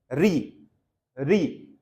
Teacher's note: कौन सा स्वर मूर्धन्य स्वर है? मूर्धन्य, मूर्धन्य मतलब जीभ की जो नोक है वो कहां टकराए? मसूड़े और आपके तालू के ठीक जॉइंट स्थल पर